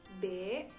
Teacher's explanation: bibir atas dan bawah saling bertemu namun gigi tidak bertemu dan posisi lidah mendatar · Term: huruf b